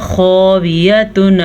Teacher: خا کو پر پڑھیں گے، جیسے قاف ہمیشہ پر پڑھا جاتا ہے ایسے خا بھی ہمیشہ ہی پر پڑھا جاتا ہے۔